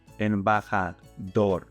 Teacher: The last letter is an R. So you're going to stress the last syllable.